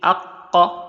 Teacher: the articulation point of qaf is just below the tongue, before the throat